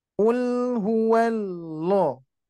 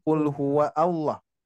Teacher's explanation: Jadi hamzah wasol ini bisa kita ketahui di Mushaf Madinah seperti itu ya. Jadi ada tanda hamzah wasol sehingga hamzah wasol ini enggak dibaca Pak. Enggak dibaca ketika diwasolkan ya.